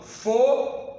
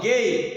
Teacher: Foneticamente, eu deixo de pronunciar o U.